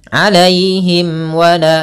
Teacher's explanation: Alaihim wala, tapi jangan ditahan ketika adanya mimat yang bertemu waw, karena dia izhar syafawi.